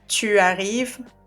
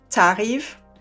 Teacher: instead of saying tu arrives, we say t'arrives, and we skip the u. Okay, we do that only when you have a verb starting with a vowel sound. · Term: contracted form